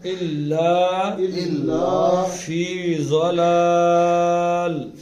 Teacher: ضلال میں آخری خاموش ہونے کی وجہ سے یہ ختم ہو جائے گا تو اس کو کھینچ دیں گے. 4-5 حرکتیں کھینچیں گے